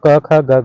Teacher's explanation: अब कंठ व्यंजन आपका क ख होता है। ये कंठ व्यंजन होते हैं